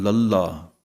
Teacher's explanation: ਲ ਜਿਵੇਂ ਜੀਭ ਨੂੰ ਪੁੱਠੀ ਕਰਨਾ ਵੀ ਕਹਿੰਦੇ ਹਨ ਜੀਭ ਪੁੱਠੀ ਹੋ ਜਾਂਦੀ ਇਹਨੂੰ ਬੋਲਣ ਲੱਗਗਿਆ ਜਦੋਂ ਅਸੀਂ 35 ਅੱਖਰਾਂ ਵਾਲਾ ਲਲਾ ਬੋਲਦੇ ਹਾਂ ਤਾਂ ਤਾਲੂ ਦੇ ਅਗਲੇ ਪਾਸੇ ਲੱਗਦੀ ਹੈ ਜੁਬਾਨ